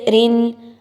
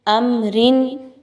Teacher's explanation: را کے نیچے دو زیر کی تنوین آ گئی، را کو باریک پڑھا جائے گا